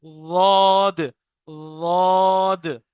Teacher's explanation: जबान का जो उल्टा किनारा है वो ऊपर दांतों को टच करता है हल्का सा, बस वाह, वाह की आवाज आती है, दौद, दौद।